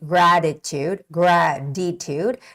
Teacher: you can make a softer T Sound by saying gratitude graditude it's more like a D sound there